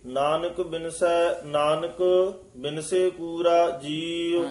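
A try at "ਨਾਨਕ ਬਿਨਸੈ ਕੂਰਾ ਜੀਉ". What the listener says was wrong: ए भी नानक पाती यमक लाउनी है, नानक बिनसे नहीं कहना, नानक बिनसे कूरा जीव।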